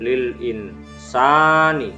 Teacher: huruf sa dibaca panjang, fathah bertemu alif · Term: mat tabi'i